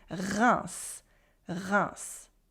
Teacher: Here, the S is not silent for once. There's a French R in the beginning, but the unusual thing here is that the whole EIM in the middle, for its own reason, it actually sounds simply like the nasal vowel 1, like the number 1.